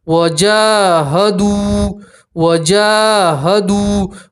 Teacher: واو مدہ اس لیے ایک الف کے برابر کھینچیں گے